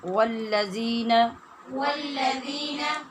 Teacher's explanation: والذین میں واو پور اور زال باریک ہے